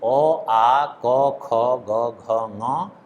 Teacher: अ, आ, क, ख, ग, घ, ङ और विसर्ग इनका उच्चारण स्थान कंठ है, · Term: कंठ्य